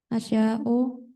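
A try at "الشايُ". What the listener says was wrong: Bukan asya'u, asyayu. Pakai yu. Asyayu.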